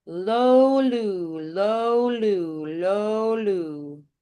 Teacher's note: the O is just a little bit more open. The U just narrows a little bit. So O more open, then narrow your lip shape.